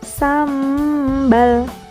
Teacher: Contohnya kata sambal. Nah, ada nun sukun bertemu dengan huruf ba, maka suara nun sukun beralih ke dalam huruf ba. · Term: iqlab